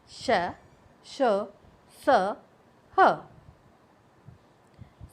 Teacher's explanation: इन व्यंजनों के उच्चारण के समय वायु मुख से रगड़ खाकर ऊष्मा पैदा करती है, यानी कि मुख से रगड़ खाने पर हवा में एक गर्मी सी पैदा होती है। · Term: ऊष्म व्यंजन